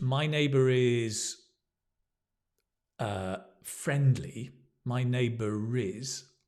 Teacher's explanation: even in British English, we pronounce the R if it links with a vowel